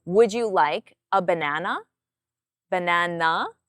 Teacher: So my tone comes up at the end. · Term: rising intonation